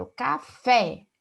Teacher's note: Café tem duas sílabas e fé a sílaba mais forte · Por exemplo, quando eu falo café, fé é a sílaba mais tônica, café tem 2 sílabas. E fé é a sílaba mais forte. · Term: oxítona